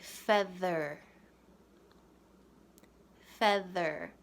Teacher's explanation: your hands on your vocal cords like this say feather feather do you hear that vibration of the sound coming out of your throat and then out of your mouth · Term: voiced sound